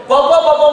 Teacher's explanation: ಪಮ ಅನ್ಬೇಕಾದರೆ ಎರಡು ತುಟಿಗಳು ಜಾಯಿಂಟ್ ಆಗಬೇಕು